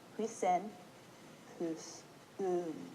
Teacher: If you listen to me say it, you can hear it's kind of low pitch, hus. And the next part is ung, which is a high pitch, and the u is a double syllable.